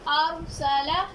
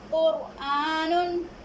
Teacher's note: रॉ साकिन, उससे पहले ज़बर और पेश होगा तो रॉ मोटी पढ़ी जाएगी। मिसालें अरसला, रॉ साकिन, उससे पहले ज़बर, हमने रॉ को मोटा पढ़ा और अरसला।